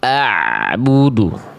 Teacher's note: bunyi ain yang tak ada pantulannya